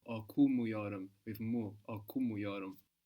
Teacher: we're putting the accent just before the m, which here in this case is not the first syllable of the word necessarily.